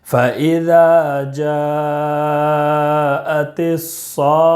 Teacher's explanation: مدہ ہے، 1 الف کے برابر کھینچ کر پڑھیں گے، اور جیم میں مد متصل ہے، 2 الف، 2.5 الف اور 4 الف کے برابر کھینچ کر پڑھیں گے · ذال میں الف مدہ ہے، 1 الف کے برابر کھینچ کر پڑھیں گے